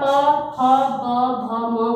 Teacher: जब आप प, फ, ब, भ, म बोलोगे तो आपके ओष्ठ मतलब होंठ, आपके होंठ क्या आपस में टकराते हैं